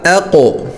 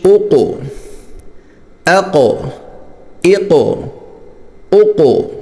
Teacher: یہ قاف موٹا بھی ہے اور اس پر قلقلہ بھی ہے